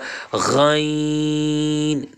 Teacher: یہ حروف مستعلیہ میں سے موٹا پڑا جائے گا